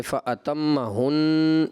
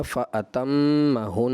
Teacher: یہ گنہ وقف میں بھی آپ جو ہے اس کی مقدار پوری کریں گے